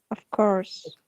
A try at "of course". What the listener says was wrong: Of course is American. In British English, we don't say of course. Of course. A long sound, R is silent. Of course.